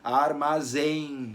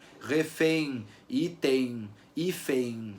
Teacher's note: Refém, item, hífen, tudo isso vai ter um fechamento de som de I aparecendo ali. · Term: semivogal I